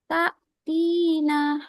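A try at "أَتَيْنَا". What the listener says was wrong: T-nya pendek. Ta, tina. A-nya panjang.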